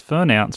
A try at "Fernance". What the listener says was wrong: Yes, you put the emphasis on the wrong syllable.